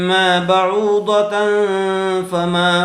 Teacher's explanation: ضاد زبر ض، ما بعوض، تا دو زبر تن، ما بعوضتن، تنوین کے بعد حروف اخفا میں سے فا آیا ہوا ہے اس لیے غننے کے ساتھ اخفا کر کے پڑھیں گے